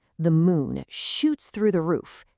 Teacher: Can you hear that long ooh sound repeating?